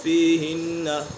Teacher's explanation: نون مشدد ہے، نون مشدد میں غنہ ہوتا ہے